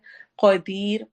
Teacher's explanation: कदीर कौफ को हम मोटा पढ़ेंगे